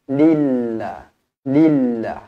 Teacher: lafzul jalalah dibaca nipis kerana sebelum lafzul jalalahnya hurufnya adalah berbaris bawah